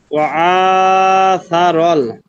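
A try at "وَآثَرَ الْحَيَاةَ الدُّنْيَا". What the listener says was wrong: হুম শুরুর হামজাটা একটু আইনের মতো হয়ে যাচ্ছে, আবার স্বাভাবিক বলেন তো।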